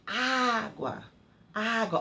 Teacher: acento agudo, quando é esse risquinho, é quando eu abro bastante a minha boca. O som é aberto